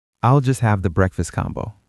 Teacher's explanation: The stress is on the food item